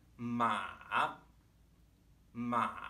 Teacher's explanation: If you can kind of feel your voice bottoming out as you hit the bottom of your register, kind of crackling a little bit. That's a good way to know you're producing a good third tone as you begin, right? · The third tone starts relatively low in our register, dips down, and then comes back up again. Ma, ma. If you can kind of feel your voice bottoming out as you hit the bottom of your register, kind of crackling a little bit.